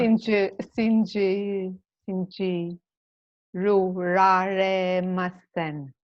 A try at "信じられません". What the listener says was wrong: Not shinjiruraremasen, but just shinji. Yeah, shinjiraremasen. Yeah, shinjiraremasen. Yeah, so remember, try to remember for group 2, that ru on the end is always removed.